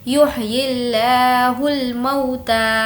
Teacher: لفظ اللہ کو ہمیں باریک پڑھنا ہے کیونکہ لفظ اللہ سے پہلے زیر ہے